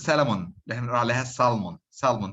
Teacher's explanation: So do not pronounce the L. The L is completely deleted.